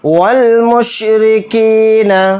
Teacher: والمشرکین، واو کو لام میں ملا دیں گے، یہ الف نہیں پڑھا جائے گا، پھر میم کو شین میں ملا دیں گے، را کو یہاں پر باریک پڑھیں گے، کاف کے ساتھ یا مدہ کاف زیر کی کو کھینچ کر پڑھیں گے، نون کو جلدی پڑھیں گے۔